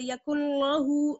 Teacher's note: اب دیکھیے یہاں پر لہو کو آپ نے باریک پڑھنا ہے. لام یہ جو ہے اللہ والا نہیں ہے یہ نارمل لام ہے اس لیے اس کو ہم باریک پڑھیں گے. آپ موٹا مت پڑھ دیجیے گا اس طرح سے.